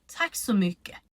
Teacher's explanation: But the last consonant in mycket falls away when we pronounce it.